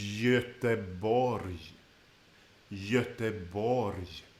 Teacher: the G at the beginning and the G at the end have been softened to, if we translate it to English, a Y, or in Swedish, a J.